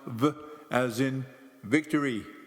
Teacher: the lips in your helenic Vita represents a leod dental sound meaning that it is produced while the lower lip is against the upper teeth the letter Vita stands for the sound v as in Victory